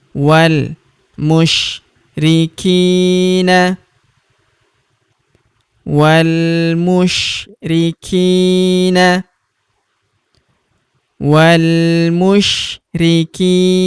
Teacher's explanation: Huruf ki kita panjangkan 2 harokat karena terdapat ya sukun di depannya